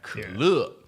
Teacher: third tone, nice and croaky and low and short, and 乐, so like nice and assertive and strong, and the full E, 可乐.